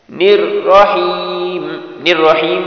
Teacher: الرحیم میں بھی را موٹی ہوگی، وہ اس لیے کہ اس را پر زبر ہے